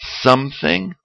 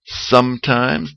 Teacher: tenemos que decir la M como una M a vez de la N